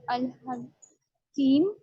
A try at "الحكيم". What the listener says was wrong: نہیں یا کہاں ہے کاف کے بعد؟ حقیقی کیوں پڑھ رہی ہو؟ کاف کے ساتھ یا تھوڑی ہے، یہ تو حرکت ہے.